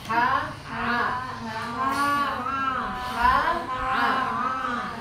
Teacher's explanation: Berikutnya wasatul halqa, tengah tenggorokan.